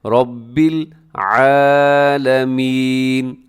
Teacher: را کے اوپر حرکت آ گئی ہے تو را کو آپ نے خوب موٹا پڑھنا ہے